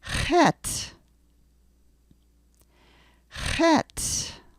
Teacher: Now in English, we tend to put our tongue up to the top of the roof of our mouth. In Hebrew, you're going to have to get the tongue coming farther back, and the sound is actually made in the beginning of the throat. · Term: guttural sound